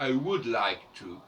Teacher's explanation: Quand on dit par exemple I would like to, eh bien, on n'entend pas le L.